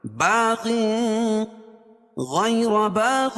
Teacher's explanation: را کو پر پڑھیں گے، کیوں؟ را کے اوپر زبر ہے